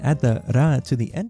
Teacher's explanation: it sounds like the R's are being rolled, which in Japanese is not a good thing